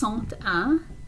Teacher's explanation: When you add the number 1 to it, then we're going to make a liaison and it becomes 101.